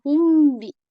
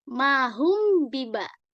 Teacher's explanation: Di sini ada contoh ihfa syafawi. Ihfa ini adalah samar dibacanya. Nah, ihfa ini ketika mim sukun bertemu dengan huruf ba.